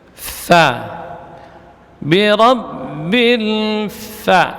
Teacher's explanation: perut bibir bawah bagian dalam menempel pada ujung gigi seri atas. Fa itu tipis ya.